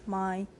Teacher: But the soft palate is down so that air can go out through the nose. The sound produced is a nasal stop.